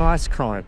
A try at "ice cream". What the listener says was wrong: Are you saying ice cream or ice crime? Okay, it's just with your accent, it's hard.